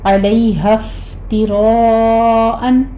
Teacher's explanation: فا پر ہمس ہوگا، را مفخم پڑھی جائے گی اور مد متصل واجب، 5 کاؤنٹ کرتے ہوئے ہم تنوین کا قاعدہ اظہار ہلکی کریں گے۔